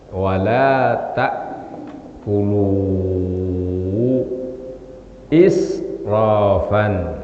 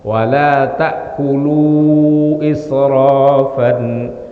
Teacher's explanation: Israfan ini hamzah. Ini tidak boleh terlalu dibaca sampai 6 harokat, tapi cukup 2 sampai 4 harokat. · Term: mad jaiz munfasil